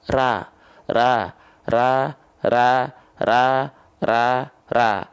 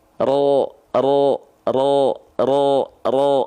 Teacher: kalau pangkal lidahnya enggak naik maka dia akan keluar bunyi vokal a karena basic fathah itu a ra ra ra ra ra ra